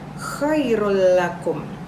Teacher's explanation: Khairun ada dhomah tanwin bertemu dengan salah satu huruf idgam bilagunnah itu lam maka bacanya tidak berdengung artinya bilagunnah yaitu tidak berdengung Chairul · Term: Idgham bilagunnah